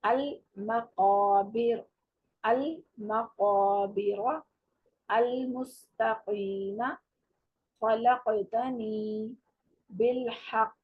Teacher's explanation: تو یہ قاف کی آواز آپ کی حلق کی طرف سے آئے گی, جو حلق کا تالو کا نرم حصہ ہے اس کو لگاتے ہوئے آپ ادا کریں گے